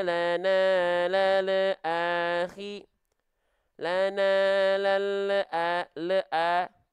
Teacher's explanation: di ujung lafalan ada bunyi vokal yang keluar yaitu bunyi vokal e u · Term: memantul